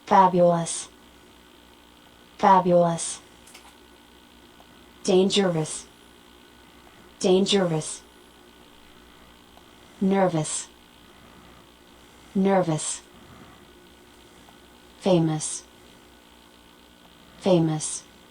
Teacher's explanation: generalmente la O y la U, sonará como el sonido schwa del idioma inglés · Como ustedes pueden ver, al final lleva ese sonido que es el schwa.